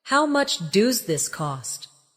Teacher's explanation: In natural conversation, does this often sounds like do this?